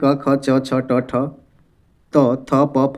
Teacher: इनके उच्चारण में स्वर तंत्रियों का कंपन नहीं होता है। इनको हम लोग कहते हैं अघोष।